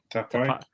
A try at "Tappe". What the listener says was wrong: There's no little dash on top of the E. We're going to go with Tappe Henning.